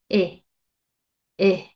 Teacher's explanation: vamos a hacer un sonido corto mezclando una I y una E juntas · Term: sonido corto de la I